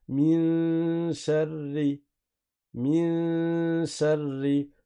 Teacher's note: La runna n'est pas grave, elle n'est pas emphatique parce que la lettre qui vient après n'est pas emphatique. Si la lettre d'après était emphatique, alors la runna aurait été emphatique.